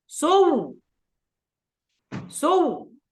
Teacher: يعني نقرأ بالتشديد ثم نمد الشفتين دلالة على الإشمام